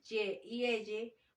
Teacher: el sonido consonántico que se pronuncia acercando el dorso de la lengua al paladar